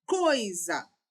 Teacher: Quem tem ênfase é o O, porque o O vai ser a nossa vogal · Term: semivogal